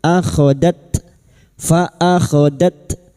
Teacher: Faakhodat ta sukun. Huruf ta ini memiliki sifat hamas dan syiddah.